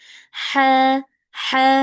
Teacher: lebih halus ya kayak lagi menghembuskan nafas tipis gitu ya. Ada suara desahnya sedikit. Ha ha ha. Nah itu yang ha kecil yang ada di wasatul halq yang ada di tengah tenggorokan itu H kecil.